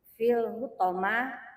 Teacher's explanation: Al-nya dibaca jelas karena lamnya sukun. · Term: alif lam qamariah